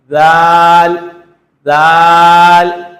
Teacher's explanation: دو جو بڑے دانت ہیں اس کے کنارے سے لگا کے زال پڑھنا ہے، اس کو ذرا لمبا کر کے پڑھنا ہے، زال زال 5 الف کی مقدار میں اس کو پڑھنا ہے، یعنی کھینچ کر پڑھنا ہے، زال۔